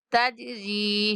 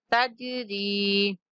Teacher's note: یہاں پہ را کو باریک پڑھیں گے کیونکہ را کے نیچے زیر ہے